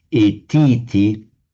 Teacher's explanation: when T immediately follows a word ending in a short vowel, as in et here, the short vowel is always lengthened